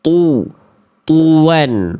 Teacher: Harusnya tu tetap monyong walaupun dia huruf tebal. Ketika domah mah harus monyong.